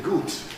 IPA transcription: gut